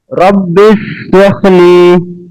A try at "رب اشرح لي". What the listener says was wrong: সা হয়ে যাচ্ছে এবার, রব্বিশ। রব্বিশ রাহলি সদরি।